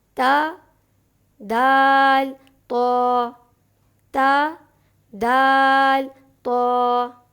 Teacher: زبان کا کنارہ یعنی طرف لسان جب ثنایا علیہ کی جڑ سے لگے تو تین حروف تا، دال، تو ادا ہوتے ہیں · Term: حروف نطعیہ